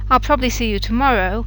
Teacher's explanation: you'll hear that the B bit gets lost in um rapid speech and then it turns to two syllables